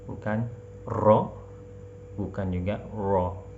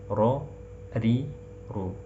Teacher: Terlalu banyak mengulang per, atau tidak ada takrir, tidak ada getarannya, ya. Yang benar adalah penyebutan ro yang sempurna, yang fasih, pertengahan antara R Indonesia dengan huruf R bahasa Inggris